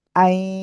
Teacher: আবার দেখেন, হামজা ইয়া জবর আই, আন না কিন্তু, আই, হালকা নাকের ভিতরে একটু আওয়াজ যাচ্ছে